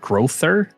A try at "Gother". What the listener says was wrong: Yeah, there's no R.